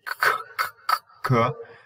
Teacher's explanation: the vellum contacts the back of the dorsum of the tongue and they make a closure and they say so these are called velar or sometimes they're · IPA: [k g ŋ]